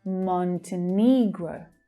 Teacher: And that final syllable there is the /əʊ/ as in 'go' sound.